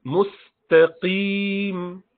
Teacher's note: This is ta with two dots. So musta, seen is flat. Ta is flat. And qaf is heavy.